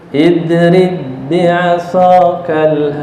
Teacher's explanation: Ba yang pertama tidak perlu dikolkolah. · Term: idgham mutamasilain